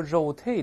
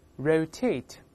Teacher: 不是汉语拼音的日，而是▁r，▁舌尖勾回去